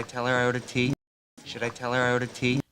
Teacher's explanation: Tea, and the pitch goes up. It's a yes, no question. Those are our 2 most stressed syllables there.